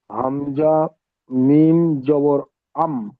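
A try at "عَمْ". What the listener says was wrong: জি, হামজা নয়, আইন, আইন মিম জাবার আম।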